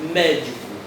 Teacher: Então, médico é o mé. A sílaba tônica é a mais forte, é proparoxítona, tem que ser acentuada.